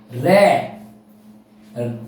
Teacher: रे एक ऐसा व्यंजन है जो परकंपित है और लुंठित व्यंजन भी है। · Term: परकंपित व्यंजन